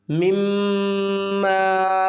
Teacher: یا ایہا الذین آمنوا انفقوا مما میم زیر میم زبر میم الف زبر ما میم مشدد ہے، یہاں پر ہم غنہ کریں گے